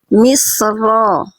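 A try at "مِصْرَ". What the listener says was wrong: Oke, ini shortnya masih kurang naik pangkal lidah. Misro. Misro.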